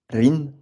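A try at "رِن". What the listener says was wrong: Au début, c'est pas simple, mais il faut essayer d'allonger un peu plus, de donner un peu plus de temps en faisant rin, qu'on entende bien le N à la fin. Rin, run, ran. Voilà, lui laisser le temps de bien sortir.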